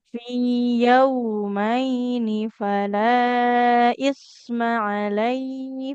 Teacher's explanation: Isma nggak boleh panjang ya mimnya. Kan fathah nggak ada alif di depannya.